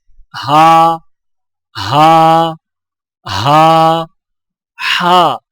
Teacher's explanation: ہا حلق سے بغیر رگڑ کھائے، ادائیگی کے وقت زبان کے جڑ کو حلق کی طرف دبائے بغیر ادا کریں